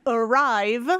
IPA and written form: əˈraɪv (arrive)